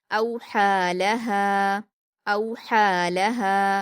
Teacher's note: हमज़ा पर वाउलीन है, नरम आवाज़ के साथ जल्दी पढ़ेंगे